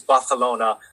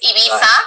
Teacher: In another language, they just decided that the C and the Z have this th sound versus an S.